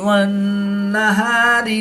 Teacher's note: या साकिन से पहले लाम पर ज़बर है, तो या लीन होगा, इसको लंबा नहीं करेंगे। नून मुशद्दिद में हमेशा गुन्ना होता है, तो यहाँ पर हम गुन्ना आनी करके पढ़ेंगे।